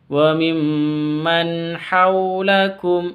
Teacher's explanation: nun sukun bertemu dengan ha, jelas bacanya karena izhar halqi · Wa mim tasydid dengung bacanya dengung karena gunnah musyaddadah